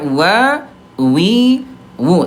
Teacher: ini dari segi udara huruf wawu dia jahar, tidak keluar udara ya